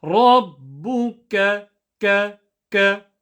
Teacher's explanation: Back of the tongue will touch the back of the top of the palate, just at the back, not too back, because then it'll turn into a qa, but just a tiny bit in front where you say it as a ka. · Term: kaf